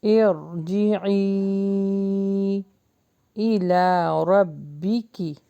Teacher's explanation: را کو ہیوی پڑھیں گے، الف مدہ لانگ ہوگا